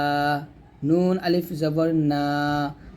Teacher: নুন জিহ্বার আগা উপরের তালুর সঙ্গে লাগবে